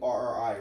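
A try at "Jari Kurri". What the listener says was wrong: No, it's a J. Jarri. Curry.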